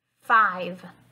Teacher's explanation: there's an F and a v sound so you're actually going to bite your lip two times